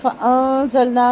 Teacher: نون ساکن کے بعد زا ہے، باریک اخفا ہوگا، نون الف نا 2 حرکت لمبا ہوگا.